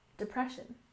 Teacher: we stress the second syllable in depression